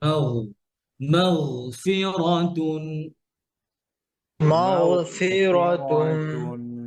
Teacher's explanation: কিন্তু গয়নের আওয়াজ বন্ধ হবে না, গয়নে কি আছে, রখাওয়া আছে।